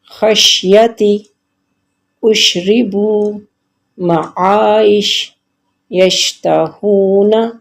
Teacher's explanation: اب آپ دیکھ رہے ہیں کہ شین پر یہاں پر جزم ہے، ان سارے حروف پر شین کے اوپر جزم ہے، تو میں اس میں شین کو ہلنے نہیں دے رہی، اس پہ اس کی مخرج پہ زبان کو تھوڑی دیر کے لیے ٹکا رہی ہوں اور آواز کو بھی چلا رہی ہوں